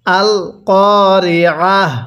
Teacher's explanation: এখানে যে তা আছে এই তাকে আমরা হা পড়বো